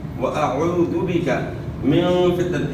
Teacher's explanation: یہاں بھی اخفاء کے ساتھ غنہ ہوگا. من فتنة المحیا، ما یا نہیں پڑھنا، حیا کو اپنے مخرج گلے کے درمیان سے ادا کرنا ہے.